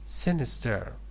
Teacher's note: So number 10, sinister, first syllable. The stress is on the first syllable.